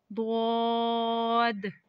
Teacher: दद जुबान की करवट और ऊपर की दारो की जड़ से अदा होता है